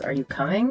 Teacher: Rising intonation, where your voice goes up at the end.